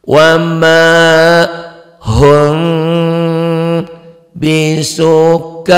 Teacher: Yauma tarawnaha, jangan kol-kolah, ini halu kullu murdi'atin amma arda'at wa tada'u kullu dhati hamlin hamlaha wa taran nasa sukara wa ma hum, coklat ketemu ba, ini ikhfa sapawi bindeng, bunyi m-nya ada eng-nya